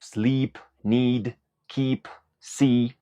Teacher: pronuncian con el mismo sonido de vocal sleep need Keep see esta vocal es una I como la de nuestro idioma español y se describe por ser una vocal larga en duración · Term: la i larga